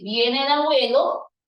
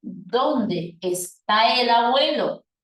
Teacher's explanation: el tipo de tono que va a presentar esa oración será un tono de tipo ascendente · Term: tono ascendente